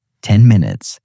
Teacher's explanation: In the phrase 10 minutes, that N begins to shift toward the M because both sounds are made in a similar place in your mouth and your brain is already thinking ahead.